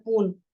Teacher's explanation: phological process so in place of saying spoon you say spon the consonant cluster is simplified into a single consonant otherwise S and P they are two consonants but it becomes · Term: cluster reduction